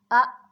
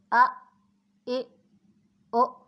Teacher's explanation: تو اس کو جھٹکے کے ساتھ پڑھتے ہیں، حمزہ زبر ا، حمزہ کی آواز کو ایک دم سے روک دیں گے تو جھٹکا ہوگا